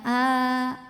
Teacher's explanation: a keluarnya dari tenggorokan bagian bawah tidak tidak berat ya Jadi ini tipis saja a tidak terlalu dibuka mulutnya a enggak ya ini biasa saja